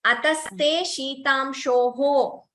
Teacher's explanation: The Visarga should be heard.